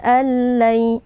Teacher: nun sukunnya kita idghamkan atau kita masukkan ke dalam huruf lam lalu kita baca tanpa dengung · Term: idgham bila ghunah